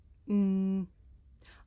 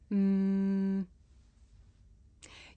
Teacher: my lips and letting the sound come through my nose mmm I can even feel my nose vibrating